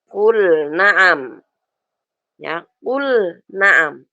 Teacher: ada lam sukun kul setelahnya ada Nun Naam dia enggak boleh dibaca qu Naam gak boleh harus jelas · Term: izhar